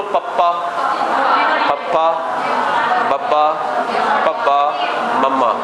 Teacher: ਹੋਠੀ ਵਿਅੰਜਨ ਇਹ ਉਹ ਵਿਅੰਜਨ ਨੇ ਜਿਨ੍ਹਾਂ ਦੇ ਉਚਾਰਨ ਵੇਲੇ ਦੋਵੇਂ ਹੋਠ ਸੰਪਰਕ 'ਚ ਆਉਂਦੇ ਹੈ, ਠੀਕ ਹੈ। ਕੋਈ ਵੀ ਜੇ ਅਸੀਂ ਹੋਠਾਂ ਨੂੰ ਬਿਨਾਂ ਮਿਲਾਏ ਬੋਲ ਨਹੀਂ ਸਕਦੇ, ਖੁੱਲੇ ਮੂੰਹ ਨਾਲ ਨਹੀਂ ਬੋਲ ਸਕਦੇ ਅਸੀਂ।